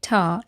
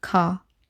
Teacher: this is when back sounds like ka and ga are replaced by sounds produced at the front of the mouth like ta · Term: fronting